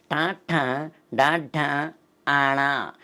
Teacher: నాలుకని పైకి తన్ని కిందకి తీసుకొస్తాం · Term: మూర్ధన్యాలు